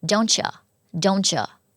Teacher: เราอาจจะเปลี่ยนเสียงอูเป็นเออะก็ได้นะคะเป็นออกเสียงแบบไม่เต็มอ่ะเป็นตัวชวา